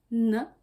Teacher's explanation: Il est prononcé à la même position que de t, mais il est nasalisé. Du coup, vous devez sentir d'air par les narines. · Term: consonnes nasales